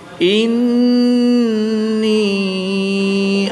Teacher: نون مشدد میں ہمیشہ غنہ ہوتا ہے تو یہاں پر ہم غنہ کر کے پڑھیں گے۔